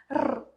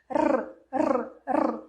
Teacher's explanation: Ela vibra no céu da boca, encosta no céu da boca e volta. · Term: R vibrante